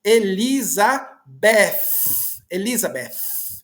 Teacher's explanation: Eles colocam o TH, eles colocam a língua entre os dentes